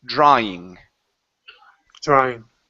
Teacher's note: the W will not sound like an oo. We don't want to say drawing.